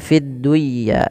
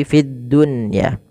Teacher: ketika nun sukun bertemu dengan ya itu harus diidgamkan. Tapi karena di sini dalam satu kata maka tidak diidgamkan. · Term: Izhar mutlak